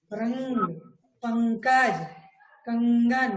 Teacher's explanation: जैसे कहते हैं सांप, चांद, आंख, तो हवा नाक और मुंह दोनों से एक साथ निकल रही है। लेकिन जब हम अनुस्वार का उच्चारण करते हैं तो उस समय हवा सिर्फ नाक से निकलती है। जो कहते हैं रंग, पंकज, कंगन, देखिए बोल के देखिए, नाक से हवा निकल रही है ना।